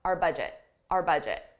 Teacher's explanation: it's a possessive our budget the budget belongs to us but I pronounce it just as a very unstressed r